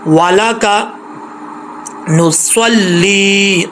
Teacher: صاد ہے، فل موت پڑھا جائے گا، یعنی موٹا پڑھا جائے گا۔ جس یہ حروف مستعلیہ میں سے ہے تو حروف مستعلیہ جب تک زبان اوپر کی طرف نہ اٹھائیں اس وقت تک یہ پر نہیں پڑھے جاتے، موٹے نہیں ہوتے، اس لیے ان کو پر پڑھنے کے لیے زبان کو اوپر کی طرف اٹھا کے پڑھنا پڑے گا، ٹھیک ہے۔